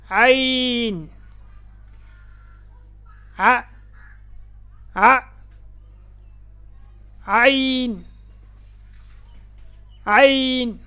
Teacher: ऐन हलक के दरमियान वाले हिस्सा से अदा होता है। गले के दरमियान जब दबाव डालेंगे तो यह हर्फ अदा होता है।